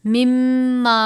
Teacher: میم مشدد ہے، غنہ کریں گے